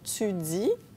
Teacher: L'affrication du T et du D devant I et U